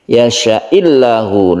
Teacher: Yasha'illahu, dan lafadz Allahnya atau lafdzul jalalahnya ini dibaca tipis atau tarkik disebabkan karena sebelumnya ada kasrah